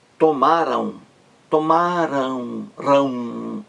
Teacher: O final aqui, AM, é um ditongo nasal. Um ditongo nasal.